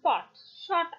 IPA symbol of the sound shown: ɒ